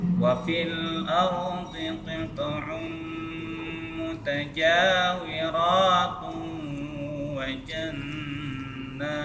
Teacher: Jadi jangan berat sebelah, itu namanya wazan ya. Seberapa panjang ja, begitu juga panjangnya ro ya. Jadi tidak timpang-timpang ya.